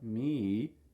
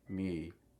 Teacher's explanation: So what you'll notice is at the end, it often has rising intonation. If you ask me, notice it goes up, me, not falling, me.